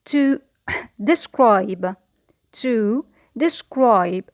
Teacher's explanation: we notice that the stress is on the second syllable because it is a verb